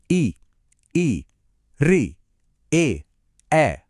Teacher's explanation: तो देखिए, हम जो स्वर बोलते हैं, वह इस पर भी डिपेंड करता है कि हमारी जीभ का कौन सा हिस्सा एक्टिव है। जब जीभ का अगला हिस्सा ऊपर उठता है, तो हम बोलते हैं अग्र स्वर · जब जीभ का अगला हिस्सा ऊपर उठता है तो हम बोलते हैं अग्रस्वर, जैसे ई, री, ए।